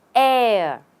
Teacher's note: no R and no h just air